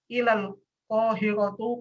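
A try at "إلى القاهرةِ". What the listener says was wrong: Kohiroti. Salah tuh. Ilal kohiroti, bukan kohirotu. salah.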